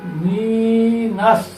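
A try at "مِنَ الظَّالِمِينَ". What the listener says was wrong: মিনাস কেমন হলো? এটা হলো জ। এটা ত, তোর উপর না, এটা হলো জ। এটা জ হয়ে যাই হোক, এটা বলো।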